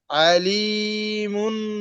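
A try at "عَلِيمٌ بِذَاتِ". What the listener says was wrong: আলিমুন। মুম, মুন না ভাই, মুন না, মুম, মিম গিয়ে মিমকে ধরবে। আলিমুন, মিম মিম দুই পেশ মুম। আলিমুন বিযাতিস সুদূর।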